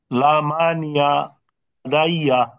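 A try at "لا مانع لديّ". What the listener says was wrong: হ্যাঁ,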